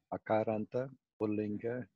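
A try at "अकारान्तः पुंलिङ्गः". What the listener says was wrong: When you say, you should not drop the visarga. Akarantaha, Pullingaha.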